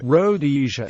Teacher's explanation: pronounced with the emphasis on the second rather than the first syllable